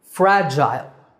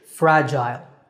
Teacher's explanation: In British English the second syllable is Jail